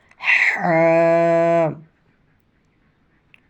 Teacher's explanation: গলার ভিতরে কণ্ঠনালীর ভিতর থেকে